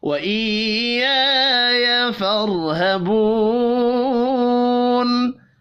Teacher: अलिफ मद्दा है, 1 अलिफ के बराबर खींच कर पढ़ेंगे, हरकत खींच कर नहीं पढ़ी जाएंगी।